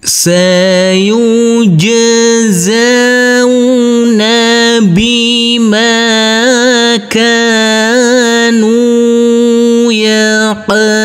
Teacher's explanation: Huruf qaf harus kita pantulkan karena ini adalah bacaan qalqalah.